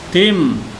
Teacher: tanwin menghadapi mim, maka hurufnya dimasukkan. Bukan tin tapi tim dibacanya. Jadi idghamnya idgham bi gunnah. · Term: idgham biguna